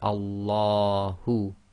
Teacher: the lam of Allah is tafkhim because we're reading it as if there's a fatha before it.